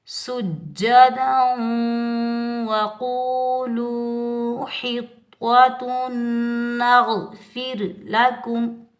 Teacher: جیم مشدد کو ہم سختی اور جماؤ کے ساتھ ادا کریں گے بغیر کھینچے پڑھیں گے.